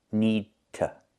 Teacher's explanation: Need to is more common, so we make the stop D, need, then we go to the t sound, release it, t with that short sound